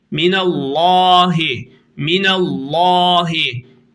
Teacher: Allah lafzını kalın okudum niye kendisi hemen önceki harfin harekesi üstün olduğu için